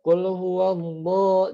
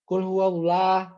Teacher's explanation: Qul huwallah, bukan, tapi qul huwallahu. Jadi tebal lamnya gitu karena didahului oleh fathah.